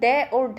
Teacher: जो डे और ढे है जिनके नीचे बिंदी लगी होती है उनका उच्चारण स्थान भी मूर्धा ही रहने वाला है। इसके अगर उच्चारण स्थान के नाम की बात करें तो ये हो जाएगा मूर्धन्य।